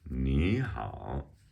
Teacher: So it's a rising tone and then a third tone, the dipping tone. · So we're getting lots of practice changing the third tone to a second tone.